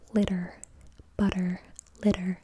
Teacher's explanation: You can feel that the top of your tongue touches the roof of your mouth so so quickly and then comes back down. That we consider to be an alophone of t in English but is considered an R sound or a rodic sound in other languages.